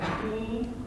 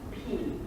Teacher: the difference between the B sound and the P sound is I have turned my voice box on 30 milliseconds later in the case of a P and the case of a B. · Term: voicing